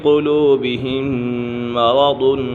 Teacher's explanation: والمؤمنون وَلِيَقُولَ الَّذِينَ فِي قُلُوبِهِم مَّرَضٌ وَلِيَقُولَ الَّذِينَ فِي قُلُوبِهِم مَّرَضٌ، یہاں پر میم مشدد ہے، میم مشدد میں سے غنہ ہوتا ہے، اور یہاں ادغام شفوی ہے، میم سکن کے بعد دوسری میم آ گئی ہے تو یہاں ادغام شفوی ہوگا